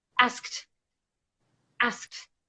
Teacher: with the word asked in the past tense asked it makes a T sound